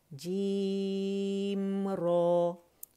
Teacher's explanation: رو کی موٹائی جو ہے نا اس کے لیے زبان کی جڑ آپ کو اٹھانی پڑے گی